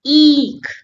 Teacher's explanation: E has long sound, long stress sound for two beats like e. And if we have to spot the difference, we will see this extra line on e means hold the sound longer.